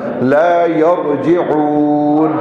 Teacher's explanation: را ساکن سے پہلے زبر آ گیا ہے تو یہ موٹا ہوگا